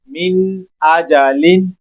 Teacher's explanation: मिन नून को खूब जाहिर कर रहा हूँ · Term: इजहार